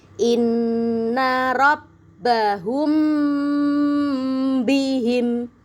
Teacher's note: Ikhfa syafawi itu adalah ketika mim sukun bertemu dengan huruf ba. Cara membacanya ditahan dengung yang lama, ya.